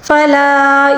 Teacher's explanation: فلا یہاں پر مد منفصل ہے، اس کو 3 الف کے برابر کھینچ کر پڑھیں گے